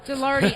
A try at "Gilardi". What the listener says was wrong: No, it rhymes with party. It's not Giraldi.